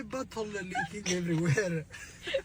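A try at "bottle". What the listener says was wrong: It literally sounds like you're saying butthole.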